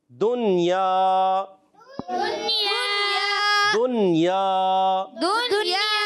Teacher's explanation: جیسے یہاں نون ساکن کے بعد یا آ رہا ہے تو ہم پڑھیں گے دنیا، دنیا، دنیا، یعنی غنہ بالکل نہیں کرنا، نون کو واضح کریں گے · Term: اظہار مطلق